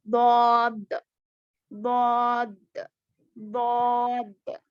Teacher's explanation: जुबान की करवट, साइड्स ऑफ द टंग ऊपर नीचे दाएं या बाएं 5 दाढ़ों को लगने से अदा होता है।